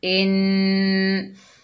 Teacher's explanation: पढ़ेंगे ला, क़ौला, हमज़ा के नीचे ज़ेर, आगे नून मुशद्दद है, हमज़ा को नून से मिलाकर पढ़ेंगे और नून मुशद्दद में गुन्ना होगा